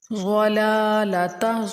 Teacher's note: ضاد کو موٹا یعنی کہ پر کر کے پڑھیں گے